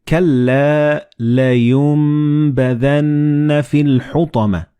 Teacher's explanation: And this meme appears in the middle of the word. So the noon and ba, when they follow one another in the same word, you don't pronounce noon or ba, but you pronounce meme. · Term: assimilated